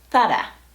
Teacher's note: You're not going to hear an /ɹ/ (American R sound) in there. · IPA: /ˈθa.ɾa/